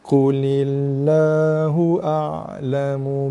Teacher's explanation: Lil nipis lam nipis. Lam tarqiq nama dia.